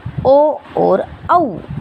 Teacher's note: ओ कंठ की आवाज़ भी आ रही है, हम ओष्ठ की भी हेल्प ले रहे हैं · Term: कंठोष्ठ